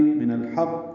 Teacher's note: نون کو لام سے ملا دیں گے، ہا وسط حلق سے ادا کرتے ہوئے قاف سے ملا دیں گے